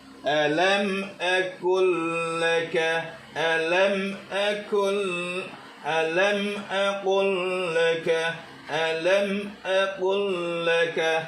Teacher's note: Nah, jadi lam matinya ini ketemu lam, jadi diidghamkan ya. Jadi lam mati ketemu lam tasydid.